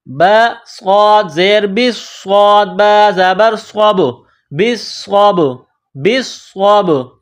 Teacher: با ساکن ہے تو یہاں قلقلہ کریں گے